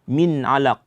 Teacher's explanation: nun mati berjumpa dengan ain, itu izhar, maka nunnya diperjelas